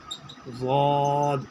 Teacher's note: اس کی آواز پورے موٹے ہوتے ہیں، اور یہ ڈاڑھ کی طرف سے ادا ہوتا ہے، ایک طرف سے وہ ہوتا ہے۔